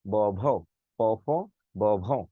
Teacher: প্রথমে প ফ বলতে আমার গলা কাঁপে না, কিন্তু ব ভ বলতে আমার গলাটা কাঁপে। যদি গলাটা কাঁপে তাকে বলে ঘুষ।